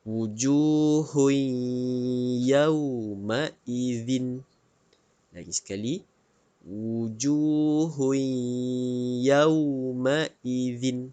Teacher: the dhommatain ini bertemu huruf ia disinilah berlakunya idgham maal ghunnah kita perlu masukkan bunyi tanwin ini ke dalam huruf ya